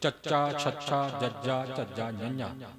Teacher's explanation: ਬੋਲ ਕੇ ਵੇਖੀਏ, ਚੱਚਾ ਛੱਛਾ ਜੱਜਾ ਝੱਜਾ ਨੰਨ੍ਹਾ, ਜ਼ੁਬਾਨ ਜਿਹੜੀ ਸੀ ਇਹ ਤਾਲੂ ਦੇ ਵਾਲੇ ਪਾਸੇ ਨੂੰ ਆ ਗਈ। ਸੋ ਇਸ ਪ੍ਰਕਾਰ ਜਿੱਥੋਂ ਚੱਚਾ ਛੱਛਾ ਜੱਜਾ ਝੱਜਾ ਚਾਰ ਅੱਖਰਾਂ ਦੀ ਆਵਾਜ਼ ਨਿਕਲੀ ਹੈ, ਉੱਥੇ ਹੀ ਜ਼ੁਬਾਨ ਰੱਖ ਕੇ ਜਦੋਂ ਆਪਾਂ ਨੰਨ੍ਹਾਂ ਦਾ ਉਚਾਰਨ ਕਰਨ ਦਾ ਯਤਨ ਕਰਾਂਗੇ ਤਾਂ ਉਚਾਰਨ ਸਹੀ ਹੋਵੇਗਾ, ਨਹੀਂ ਤਾਂ ਨਹੀਂ ਹੋਵੇਗਾ।